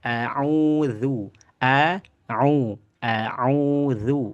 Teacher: A'udzu ya, bacaan panjang tadi melalui al jauf rongga mulut. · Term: mad tabi'i